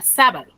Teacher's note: yo pronuncio con mayor énfasis la sílaba sa entonces la sílaba sa es la que tiene la mayor fuerza de voz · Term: sílaba tónica